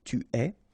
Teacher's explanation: Okay, so je suis, final S not pronounced, tu es, okay, so it's quite strange because you get this ES, but then phonetically it's est, alright, quite open, tu es. Il est, exactly the same sound as we had previously, okay, so just remember that you write it like that, but then phonetically it goes like est, elle est.